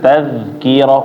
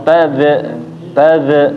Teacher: Jadi ketika membaca huruf kaf sukun, dza sukun itu jangan dipantul.